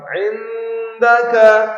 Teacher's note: nun mati bertemu dengan dal itu namanya ikhfa hakiki, ya, dibaca samar.